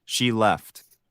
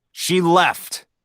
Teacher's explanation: notice how intonation can change a statement into an exclamation showing emotion